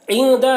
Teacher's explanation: عند، یہاں پر نون میں اخفا ہوگا، نون ساکن کے بعد دال ہے، حروف اخفا میں سے، تو نون میں اخفا کریں گے